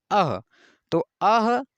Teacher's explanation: यहाँ पर अह का उच्चारण स्थान कंठ, हा का उच्चारण स्थान कंठ, सेम है